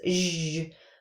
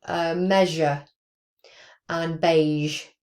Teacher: the voiced version, which is zh, which isn't very common on initial words, but it's really common on in the middle of words and word final position. So word medial and word final position.